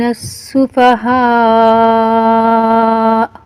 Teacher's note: یہ مد متصل مد واجب ہے، اس کو 4 سے 5 الف کے برابر کھینچنا ہے